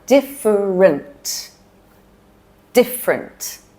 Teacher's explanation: So the middle E gets dropped here.